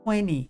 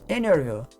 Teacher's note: T depois de um N, você não pronuncia o T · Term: omite T